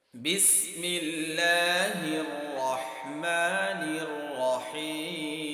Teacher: ঠোঁটটা গুছিয়ে নিয়ে এসেছি কারণ মিমের মাখরাজটা ঠোঁটের শুকনো জায়গাতে হয় রাহিম বলার সময় ঠোঁটটা গুছিয়ে নিয়েছি এখানেও মিমের মাখরাজ